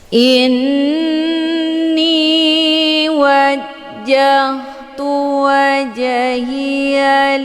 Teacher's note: yang terdapat di pertengahan kalimat ini dinamakan dengan Qalqalah cara bacanya huruf jimnya dipantulkan dengan pantulan ringan keluar bunyi je Sekedar Saja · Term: qalqalah sughra